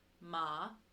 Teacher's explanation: you have your second tone which is your rising tone so it's ma so you just kind of rise kind of